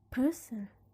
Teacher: the stress is going to be in the first syllable